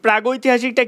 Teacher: পরে থাকা স্বরধ্বনির কারণে অঘোষ ক ধ্বনি পাল্টে ঘোষ গ ধ্বনিতে রূপান্তরিত হচ্ছে